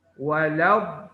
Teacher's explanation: Nah, ini mah dibaca panjang 6 harokat. Jadi do-nya dipanjangkan dulu baru dimasukkan ke lam.